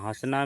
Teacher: हंसना में चंद्रबिंदु यानी अनुनासिक क्योंकि बोलते समय हवा नाक और मुंह दोनों से निकलती है।